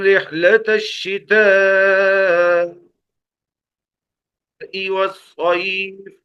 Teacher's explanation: مد متصل، یعنی کم از کم چار الف کے برابر کھینچ کر پڑھیں گے. کم از کم چار الف کے برابر.